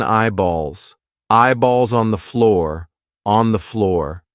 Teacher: Yes, it's a dark L because it comes before a consonant.